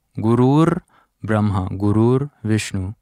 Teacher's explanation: So we have this R sound there because of the next word. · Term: sandhi